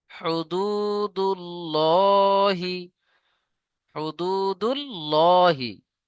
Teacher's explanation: আল্লাহ শব্দের লামের আগে পেশ, এখানেও মুখ গোল করে পুর করে পড়তে হবে।